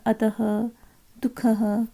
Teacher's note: विसर्ग का उच्चारण जो है ह के समान होता है